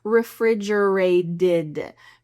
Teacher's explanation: the T becomes a D